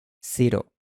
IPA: sɪɾo